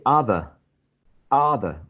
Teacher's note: if you say other other right trying to sound quite British then that it would be a non-rhotic variety